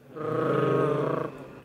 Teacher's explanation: So, it is either tap or trill, and when you say tap or trill, it means that it is produced from the front of the tongue.